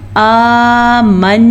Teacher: खड़ी ज़बर तकरीबन एक अलिफ मद्दा के बराबर होता है, तो इसलिए हमने इसको कितना खींचा आमन्ना।